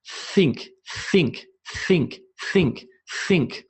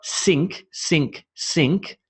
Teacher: my tongue is below my two top teeth and there's no sound through my throat it's purely coming from my teeth in the air